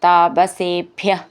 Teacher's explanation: ഭ്യ എന്നുള്ള അക്ഷരം നന്നായിട്ട് ഊന്നി പറയാനുള്ളതാണ്